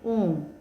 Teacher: तो इसके उच्चारण में ह्रस्व स्वर से 3 गुना समय लगता है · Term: प्लुत स्वर